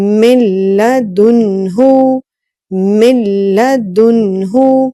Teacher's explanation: यहाँ पर दाल के बाद जो नून साकिन है और नून साकिन के बाद हा है, यहाँ पर भी नून साकिन के बाद जो हा आ रही है इसमें गुन्ना नहीं होगा, क्योंकि हा जो है हरूफ हल्किया में से है और हरूफ हल्किया जहाँ पर आ जाए तो वहां पर इजहार का रूल अप्लाई होगा, इजहार का जो कायदा नंबर 1 था, तो इजहार की वजह से यहाँ पर गुन्ना नहीं हो रहा। · गुन्ना नहीं हुआ, इसलिए कि नून साकिन के बाद लाम है और लाम जो है ये ऐसे हरूफ में से है जिनमें गुन्ना नहीं होता।